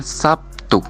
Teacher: Misalnya, kata Sabtu dalam bahasa Indonesia sering diucapkan Sabtu, di mana terlihat bunyi B berubah menjadi P sebagai akibat pengaruh huruf T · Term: asimilasi